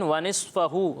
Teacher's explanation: صاد جو ہے یہ حروف مستعلیہ میں سے اسے پر پڑھیں گے